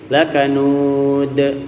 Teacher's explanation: Dal di akhir ini qalqalah kubra kita lepaskan, ya, kita pantulkan lebih besar otomatis kadarnya dari qalqalah sugro